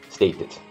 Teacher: a letra D no final dessa palavra, às vezes ela pode ter um som de T